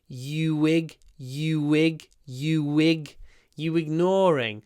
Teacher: Ignore begins with a vowel, and the first syllable is unstressed, which means it's a word which is almost always pronounced with connected speech.